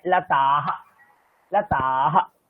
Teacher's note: আমরা যদি তাড়াতাড়ি বলি, তো লতা হা ওটা দীর্ঘ হয় না, ওটা কেবলই শুধু বিসর্গটাই রয়ে যায়।